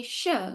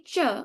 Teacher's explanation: The sh sound comes from the same spot as ch. When you say ch and you say sh, they sound they have the same placement in your mouth.